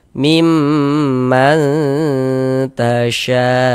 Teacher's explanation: Kemudian kita dengungkan. Jadi di bagian mannya itu suaranya itu kita tahan, kita panjangkan sejenak. Ee sepanjang dua harakat kita dengungkan. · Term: ikhfa hakiki aqrab